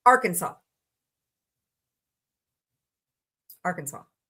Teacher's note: final S silent and the A in each syllable with the Italian sound and the accent on the first and last syllables